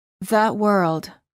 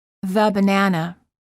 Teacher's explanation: when it's followed by a consonant the final sound is uh